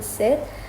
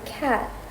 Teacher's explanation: high vowels like A in sit are usually shorter than low vowels like A in cat